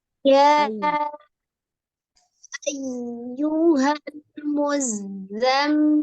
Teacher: yang di ayat 1 ya-nya panjang 4 sampai 5